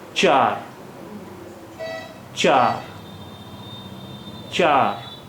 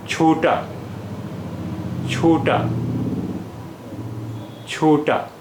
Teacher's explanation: Ch without aspiration and cha is aspirated sound.